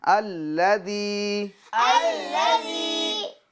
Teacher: جی ذال یا زیر دی ذال یا زیر دی الذی الذی ایک الف کی مقدار کھینچیں گے ٹھیک ہے ابھی مد نہیں ہوگا ٹھیک ہے وہ مد منفصل نہیں ہوگا ابھی ایک الف کی مقدار کھینچیں گے